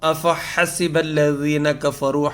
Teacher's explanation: ہا جو ہے یہ حلق سے نکلے گی، حروف حلقی میں سے ہے، اور ذال جو ہے وہ نرم ہے۔